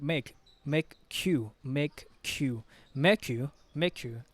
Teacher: we have a linking sound make and you the K will blend that we will the K sound the